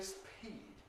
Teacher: Koreans and Chinese tend to say speed with aspiration. We look at this when we talk about aspiration, but it's inappropriate in this position after s. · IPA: [spʰiːd]